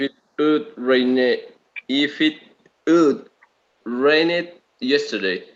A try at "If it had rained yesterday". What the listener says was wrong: Good, but you need to reduce this. It's not stronger, it's weaker. Yeah, so it's if it had rained, it's very short sound.